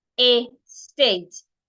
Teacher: Now the word estate has two syllables. Estate. And you're stressing the second syllable, state.